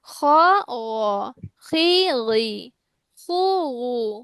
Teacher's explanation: উচ্চারণ স্থান যেহেতু একই, অনেক সময় কি খ গইনের মতো শোনায়, গইনও খ এর মতো শোনায়